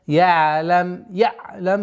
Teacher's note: Айн мягкая, такой скользящая остановка.